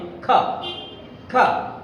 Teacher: এই উচ্চারণটা এর একটা কনসোনেন্ট সাউন্ড, যেটার উচ্চারণটা হচ্ছে জিহ্বার গোড়া থেকে জিহ্বার গোড়াটা উপরের তালুর সাথে লাগিয়ে উচ্চারণ করতে হবে খ